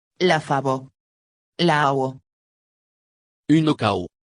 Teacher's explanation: On peut trouver en Gascogne une prononciation du V, comparable au W anglais quand il est situé entre deux voyelles.